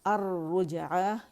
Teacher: الرجعہ یہ لام شمسیہ ہے، شمسی حرف را نے لام کو اپنے اندر مدغم کر لیا، مرج کر لیا، جس کی وجہ سے لام را کی صورت میں پڑھا جا رہا ہے